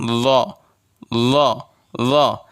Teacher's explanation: জিহ্বার আগা উপরের দাঁতের আগার সঙ্গে লাগাবেন। এটা লাগালে উচ্চারণ হবে নরম একটা উচ্চারণ